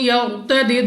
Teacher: ادغام کا قاعدہ ہے غنہ کر کے پڑھیں گے. را ساکن سے پہلے حرف پر زبر ہے تو اس را کو پوری یعنی موٹا پڑھیں گے. دال ہمارے پاس قلقلہ میں سے ہے تو جب ہم ادا کریں گے ہمیں اپنی آواز واپس لوٹتی ہوئی سنائی دے گی.